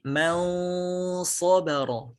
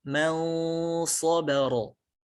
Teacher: Kata man dengan sobaro menjadi mal-sobaro. Jadi pengucapan nunnya itu samar antara nun dengan sod. Dan lidah kita sudah bersiap untuk mengucapkan huruf sod. Man sobaro menjadi mal-sobaro. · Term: ikhfa